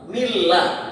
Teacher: makanya tidak ada suara nun, seakan-akan nggak ada, seakan-akan mim ketemu lam